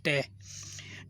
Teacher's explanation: जो ट है ये मूर्धन्य है कि जब हम उच्चारण करते हैं तो ये दांत से जीभा नहीं टकराती है